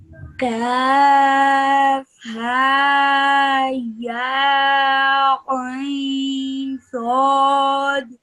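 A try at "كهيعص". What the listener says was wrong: But what I want you to do right now, what you're doing is you're saying each letter for the same amount of time.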